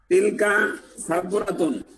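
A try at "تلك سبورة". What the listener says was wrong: বাহ, সুন্দর।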